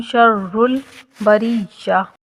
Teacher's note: را مشدد حرف ہے، ذرا سختی کے ساتھ رک کر پڑھی جائے گی۔ شر البریہ، اسی طرح یا بھی مشدد حرف ہے تو یہاں اس کو بھی سختی کے ساتھ ذرا رک کر پڑھیں گے۔